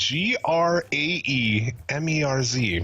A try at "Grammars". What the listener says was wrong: I would say Grammars because there's no H. Graham has to have an H.